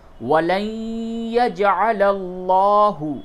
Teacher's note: نون ساکن کے بعد یا ہے، اس جگہ پہ ادغام مع الغنہ کیجئے